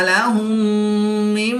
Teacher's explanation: میم ساکن کے بعد دوسری میم ہے تو یہاں پر ادغام شفوی ہوگا تو یہاں پر غنہ کر کے پڑھیں گے